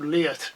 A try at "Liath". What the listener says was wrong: It's actually, you're not supposed to pronounce the TH. Leah. No, everyone does.